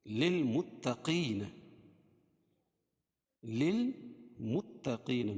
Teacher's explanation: ان للمتقین مفازا، ان نون مشدد غنہ ہوگا، ایک الف کے برابر غنہ کریں گے اس میں، للمتقین، للمتقین، میم کو تا میں سختی کے ساتھ ملائیں گے کیونکہ تا پر تشدید